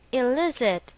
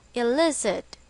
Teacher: It is pronounced as illicit, with the stress on the second syllable